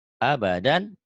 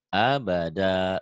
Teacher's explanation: Mad iwad. Dua fathah dibaca satu jika dihentikan. · Bila wakof berhenti tanwin, dihilangkan dan dibaca panjang.